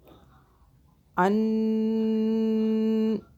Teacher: طالوت ملکا، طالوت ملکا، قالو، چھوٹی مدہ 3 الف کے برابر کھینچا۔ ان، نون مشدد جان کے لمبا کر رہی ہوں تاکہ پتہ چلے، یہاں غنہ کریں گے